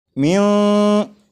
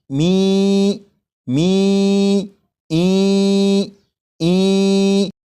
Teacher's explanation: یہ جو آواز ہے می ای، یہی ادغام ہو رہا ہے، اور ادغام اس طرح کے نون ساکن کو یا میں شامل کر کے پڑھا جا رہا ہے اور غنہ کر کے پڑھا جا رہا ہے